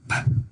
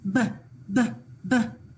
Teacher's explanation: it's a lip Puffer PP unvoiced it's a lip puffer BBB voiced